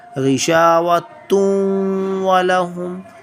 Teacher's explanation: Here we are studying the example of ikhfa, and we will hide the sound of tanween in our nose. Ghishawattun walahum.